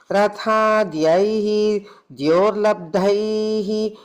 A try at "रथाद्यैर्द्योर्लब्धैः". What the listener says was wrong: Guru, that Rata Dhyair, if you have a Visarga there, you can put a ir to join. Rata Dhyair, Dior, Labdaih, ih, instead of the Visarga. Labdaih, not Labdaihi, it becomes a ih sound instead of, you can put the joining sound to join it instead of the Visarga, yeah. Ratadhyair, Dior, Labdaih.